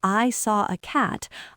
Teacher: If I say, I saw a cat, I'll stress the word cat because it's the new information. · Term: sentence stress